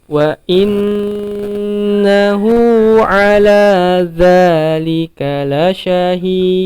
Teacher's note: Ya, wa inna, kembali lagi di sini inna, maka harus ditahan karena di sini gunnah. Wa innahu, hu di sini panjangnya 2 harokat, kemudian a di sini pendek, lamnya 2 harokat lagi, maka dijaga temponya.